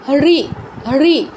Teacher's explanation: এটার উচ্চারণ হচ্ছে মূর্ধায়, জিহ্বা মাড়ি থেকে একটু পেছনের অংশে স্লাইড করবে